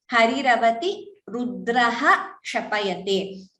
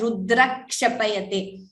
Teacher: when visarga is followed by ksha, visarga is chanted completely.